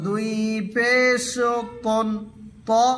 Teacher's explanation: জিহবার আগা সামনের দাঁতের আগা থেকে উচ্চারণ করবে মোটা করে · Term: পুর হরফ